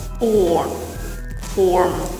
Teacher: Чтобы проверить себя, вы опять можете представить, что у вас во рту яйцо, и вы пытаетесь произнести этот звук O. Если вам нравится американский акцент, добавьте небольшой призвук R после этого звука.